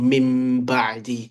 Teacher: to make it easier to pronounce, instead of saying in Ba, we change this Noon to a Mim. And Hmm. we apply ghunna to it, so nasalization. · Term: Iqlab